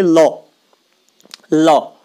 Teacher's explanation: दंत है मतलब दांतों का पिछला हिस्सा, क्योंकि आपकी जीवा दांतों के पिछले हिस्से को छुएगी। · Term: दंत्य